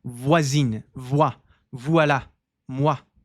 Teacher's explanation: um outro sonzinho muito importante aqui, que é o som do OI. Aquele clássico wa em francês.